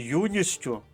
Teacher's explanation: подовження не відбувається бо звук ть Він знаходиться між приголосним с і звуком у